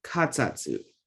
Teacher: Not back of the throat sound, just regular K sound.